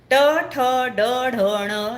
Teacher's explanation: जीभ टाळूला लागते एकदा करून बघा ट ठ ड ढ ण यांना मूर्धन्य म्हणतात कारण याचा उच्चार करताना जीभ मूर्धाला लागल्याने होतो